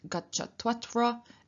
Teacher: Gacchatu atra, meaning let him come here, may he come here, has the u changing into a w in front of the a, and so we get gacchatvatra.